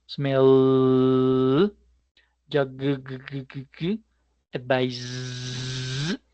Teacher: todos ellos terminan en sonido que genera vibración